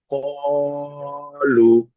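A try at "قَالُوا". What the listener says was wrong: মাশাআল্লাহ, ক যতটা টান করেছেন লুটাও ততটা টান করতে হবে। যেমন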